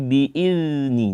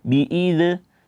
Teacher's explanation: sempurnakan sifat rakhawahnya suaranya keluar dulu baru lanjut ke huruf selanjutnya jangan langsung ditarik maka akan terjadi pantulan nantinya